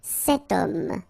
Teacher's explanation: But then O is here, we've got this H letter. Remember, H is not pronounced, okay? So you get the sound of O at the beginning of this word